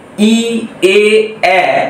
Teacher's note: তখন জিভের অগ্রভাগ সামনের দিকে প্রসারিত হচ্ছে। অর্থাৎ এরকম ভাবে জিভের অগ্রভাগ সামনের দিকে প্রসারিত হচ্ছে। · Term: সম্মুখ স্বরধ্বনি